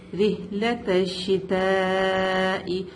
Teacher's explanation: یہاں پہ مد متصل ہے, اس کو 4 to 5 کاؤنٹ ہم لمبا کریں گے